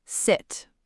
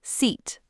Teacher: Sit, short i, mouth relaxed. Seat, long e, corners of your mouth spread, like a smile. >> Like you're smiling and saying it at the same time.